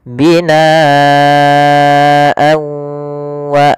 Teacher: huruf setelahnya kalau di sini huruf setelahnya adalah huruf wau maka tanwinnya kita masukkan kepada huruf wau kemudian ditahan gunahnya